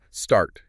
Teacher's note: You feel that little burst of air after the S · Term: Aspiration